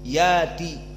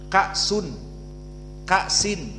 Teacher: Jika sebelumnya fathah dengan alif. Maka seperti ya'ti menjadi yati, ya'ti menjadi yati, dijadikan mad tabi'i, hamzahnya diganti alif.